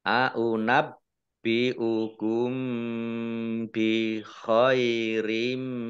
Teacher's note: mim sukun bertemu dengan huruf ba, bacaan ikhfa syafawi, dibaca samar-samar